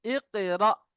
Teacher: হামজার উপরে সাকিন এসছে, তাই একটু ধাক্কা দিয়ে পড়তে হবে।